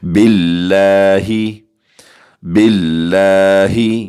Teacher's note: باریک پڑھیں گے اور تھوڑا سا لفظ اللہ کے لام کو کھینچ کر پڑھیں گے